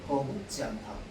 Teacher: 안 울린 소리 뒤에는 예사 소리가 올 겁니다.